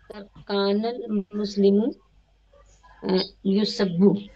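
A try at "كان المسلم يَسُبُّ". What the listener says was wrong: युसब्बु नहीं, यसुब्बु, बाबे नसरा से मजहूल क्यों पढ़ रहे हैं भाई? सब यसुब यसुब्बु, मेरे बोलने के बाद भी नहीं बोलते आप तो कैसे काम चलेगा?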